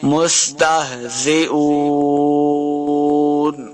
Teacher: زئون حمزہ پیش واو واو مدہ ہے، اس کو دو حرکات لمبا کر کے پڑھیں گے اور واو کے اوپر دونوں ہونٹ گول کرنے ہیں. مستہزئون آخر پہ ہم نے وقف کرنا ہے.